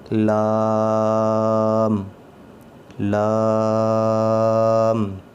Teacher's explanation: اس کی ادائیگی میں بیچ میں ناک سے آواز نہیں آنی چاہیے